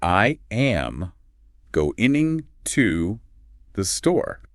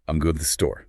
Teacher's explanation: The words to the are reduced to this tiny fraction of a second. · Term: rhythmic compression